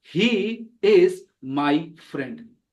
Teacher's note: when I speak it, I don't have to emphasize he because he is pronoun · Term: unstressed word